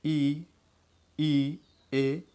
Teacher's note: इन स्वरों के उच्चारण में दोनों ओठ खुलकर वृत्ताकार रूप नहीं बनाते हैं, मतलब पूरा गोल नहीं होते हैं, रूप नहीं बनाते हैं। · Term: अनराउंडेड